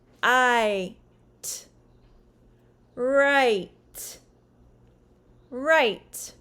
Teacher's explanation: at the beginning of the sound the tongue is low and touches the bottom side teeth as the jaw closes slightly the body of the tongue moves upward until it is near the tooth ridge which is immediately behind your top front teeth similar to the · the long i is actually a two sound vowel that ends in a brief ye sound at the beginning of the sound the tongue is low and